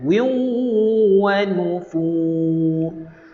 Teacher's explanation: Tanwin itu adalah tanwin yang tidak selari berjumpa dengan huruf waw. Dengung dengan memasukkan ke dalam huruf waw. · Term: idgham bi ghunnah